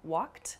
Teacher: you might hear a word like walked also which has a sort of T sound about it